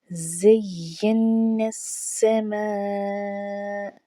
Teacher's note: زا پر سیٹی کی آواز آنی چاہیے، زا سختی کے ساتھ پڑھا جائے گا۔